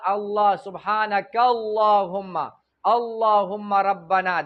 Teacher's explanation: څه مطلب؟ چې کله د دې اللهم نه مخکې زبر پیش وي دا به ډک وي